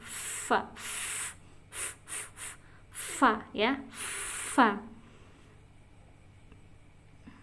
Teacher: Fa itu ujung gigi seri atas menempel pada bibir bawah yang basah. Nah, ini bibir pada bibir fa. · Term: huruf fa